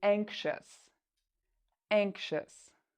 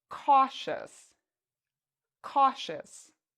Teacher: Ious in this word is pronounced as a shus, anxious. So this is very different from how we spell this word.